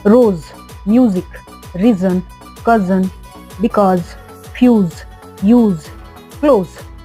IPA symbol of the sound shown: z